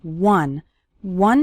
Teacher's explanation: starts with the W sound okay some students pronounce it like on but that's not correct